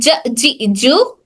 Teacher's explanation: जीम बिल्कुल middle से अदा हो रहा है, यानी हमारी जबान का बिल्कुल ही दरमियानी वाला हिस्सा, सेंटर ऑफ अवर टंग, बिल्कुल दरमियान, वो वाला हिस्सा हमारे तारक के बिल्कुल दरमियानी वाले हिस्से से एकदम ये मिडिल वाला पार्ट इस वाले तारक के पैलेट के मिडिल वाले पार्ट को टच होकर हर्फ जीम अदा होता है।